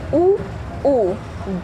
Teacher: ऊ वृत्ताकार है, होंठ से बोले जाते हैं।